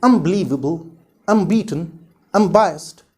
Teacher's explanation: this N sound is changed into M sound if it is followed by the letter B or the sound B. And this change either happens both in writing and reading or in reading or speaking only.